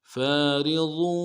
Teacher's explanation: فارض ولا بكر عوان بين ذلك فارض ولا بكر عوان بين ذلك فارض فا کے ساتھ الف مدہ ہے، ایک الف دال کھینچیں گے، را کو باریک ادا کریں گے، ضاد کو موٹا ادا کرنا ہے، واو کے ساتھ ملانا ہے، واو کے اوپر تشدید زور دیں گے۔